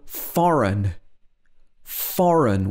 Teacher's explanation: you have an n after a g so in this case the g is generally silent